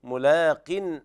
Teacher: لابد من ترقيق اللام بهذه الطريقة